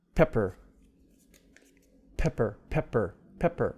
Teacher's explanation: the first pea has aspiration the second one does not